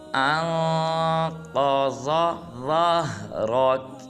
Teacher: جب حمزہ کو نون ساکن کے ساتھ ملائیں گے تو اخفا کریں گے اور قاف اور ضاد کو پر ادا کریں گے